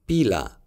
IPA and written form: piː.la (पीला)